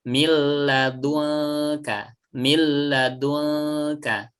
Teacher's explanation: lam itu ujung lidah menempel ke langit-langit atas jadi lidahnya tidak menjulur keluar ya naik ke atas